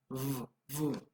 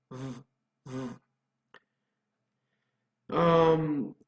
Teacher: you create friction between the bottom lip and the top teeth. And it is fricative because the sound is produced by high pressure airflow between a narrow space in the mouth. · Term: labiodental